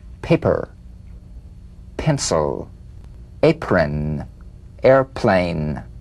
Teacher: the unvoiced laal stop consonant the whispered cap of this drumbeat p is played with a light springing apart of the lips just like for the bee on the springing away feel a bee in a whisper without any puff of air